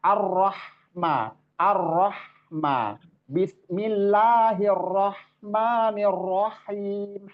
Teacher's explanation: suaranya itu berasal dari halq tenggorokan yang tengah